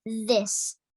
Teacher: the tip of the tongue comes out of the mouth slightly but with vibration it presses against the edge of the Upper Front Teeth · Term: th sound